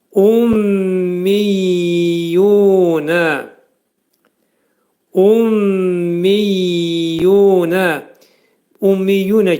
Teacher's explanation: Burunun daxilində mimlər şiddətli şəkildə sıxılır. 2 Y hərfi gəlir. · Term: idğam mə'al gunnə